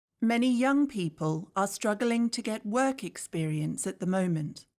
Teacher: notice how the words young struggling work and moment are all stressed